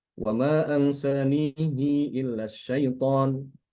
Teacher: Imam Ibnu Katsir membaca dengan mengkasrokan hak, ya, menambahkan padanya silah